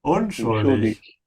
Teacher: Emphasize the prefix un.